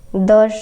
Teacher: सघोष अल्प प्राण होता है